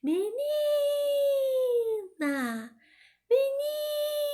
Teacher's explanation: Não foi a última sílaba, não foi o na, foi o ni. Foi a penúltima. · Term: sílaba tônica